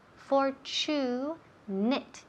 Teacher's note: la TU suena como si fuera CH